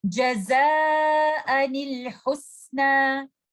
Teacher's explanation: We have to give kasra to the noon that is hidden in tanween and we will join that noon with letter lam